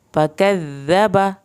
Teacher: ज़ाल को नरम पढ़ना है और इसकी शद भी आपने पढ़नी है